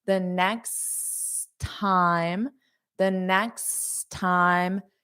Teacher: There's only one T pronounced because we have two.